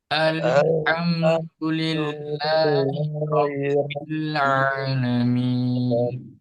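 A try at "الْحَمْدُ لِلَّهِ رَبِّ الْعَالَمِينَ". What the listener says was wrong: Ya, tidak boleh terlalu panjang. Alhamdulillahi Rabbil Alamin. Nah, itu kelebihan. Alhamdulillahi Rabbil Alamin.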